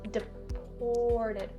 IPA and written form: dɪ-ˈpɔːr-tɪd (deported)